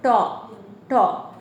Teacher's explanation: ট বর্গীয় ধ্বনির উচ্চারণ স্থান মূর্ধা। জিহ্বার উল্টো পাশ উল্টে গিয়ে মূর্ধাকে স্পর্শ করে। · জিহ্বার উল্টো ভাগ ধরো এভাবে উল্টে এই ভাগটা গিয়ে মূর্ধাকে স্পর্শ করে